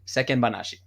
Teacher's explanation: This is a tough pronunciation issue in Japanese for a lot of foreigners, but there's no chichaitsu. There's no glottal stop there.